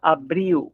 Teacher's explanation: Recuerda que a letra L, final de palavra em português, vai ter o sonido de U, queda abril, como um ditongo.